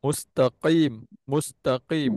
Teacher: Qaf baris bawah kena tebal juga. Qaf >> makhraj dia ah sama tapi dia punya sifat dia a tebal.